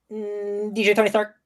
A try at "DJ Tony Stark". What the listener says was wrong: It kind of sounded like you said DJ Tony's Dark a little bit.